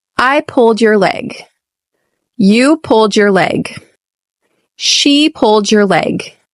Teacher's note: You'll notice here that the emphasis is on the second word, which is the verb.